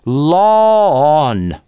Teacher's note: Law on, а вот здесь никакого [w] не должно вылезать на стыке. Потому что слово law и слово low это разные вещи.